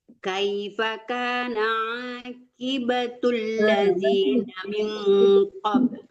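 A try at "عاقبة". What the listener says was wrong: Jangan ki tapi qi ya. Aqibatul.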